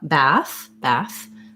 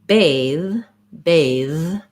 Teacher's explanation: this th is a voiced th and it's the same th sound we have in words like them there that same mouth position but my voice is on